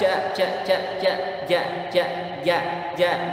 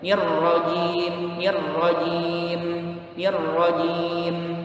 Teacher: Jim itu bersih, jahar. Dia kuat juga, syiddah juga hurufnya.